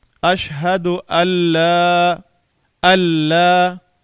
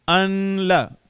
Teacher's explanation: اب غنہ نہیں ہوگا کیونکہ لام میں ادغام تام ہوتا ہے نون کا